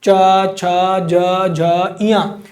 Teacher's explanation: ये ऊपर वाले दोनों दांतों के ठीक पिछले हिस्से को छूने जा रहा है। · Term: तालव्य